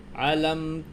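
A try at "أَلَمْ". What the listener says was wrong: একে চাপ দেওয়া যাবে না, চাপ দিলে আইন হবে। না না, একটু বুঝতে হবে যে আইনে আ আ আইনে চাপ দিতে হবে, হচ্ছে চাপ। আর হামজাতে শুধু গলাটা ছাড়িয়ে দিতে হবে।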